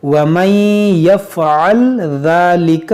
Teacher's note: یہاں پر نون ساکن کے بعد یا ہے تو یہاں پر ادغام کریں گے